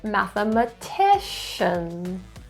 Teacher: stress is in the fourth syllable